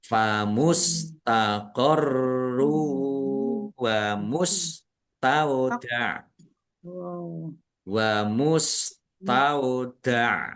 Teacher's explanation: Dhammah tanwin bertemu dengan huruf wawu bacaan idgham bi gunnah masuk dengan mendengung